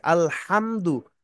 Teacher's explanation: মিম সাকিনকে গুন্না করার জন্য শর্ত হলো বা মিম আসতে হবে, আসে নাই, স্পষ্ট করে পড়বো